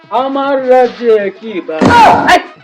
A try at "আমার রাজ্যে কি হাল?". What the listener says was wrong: আরে বাল না হাল হবো।